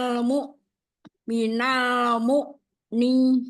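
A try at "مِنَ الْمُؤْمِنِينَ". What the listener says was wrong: Karena tadi agak masuk ke atas. Minal mu'. Nah, jangan. Minal mu'ni langsung.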